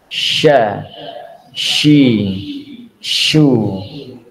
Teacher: kalau syin ini adalah lidah bagian tengah Jadi bukan ujung lagi tapi tengah